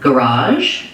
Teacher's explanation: garage has second syllable stress. So the raj syllable is long and the first syllable ga is short and unstressed.